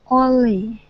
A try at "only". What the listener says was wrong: Okay, pronounce the N and that L. Only. When your tongue goes up to the top of your mouth to pronounce the N, okay, leave your tongue there and then curve it to pronounce the L. Only. Only.